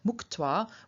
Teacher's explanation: palatal stops in front of a T turn into a velar, and specifically they turn into the voiceless, unaspirated velar K